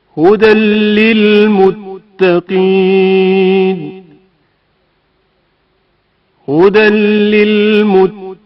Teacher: حرف لام میں تنوین کا ادغام